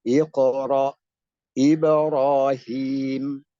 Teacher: maka bunyi pelafalan qalqalahnya lebih dekat kepada bunyi kasroh atau vokal I